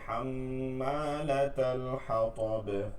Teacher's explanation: হাম্মা হলকের মধ্যখান থেকে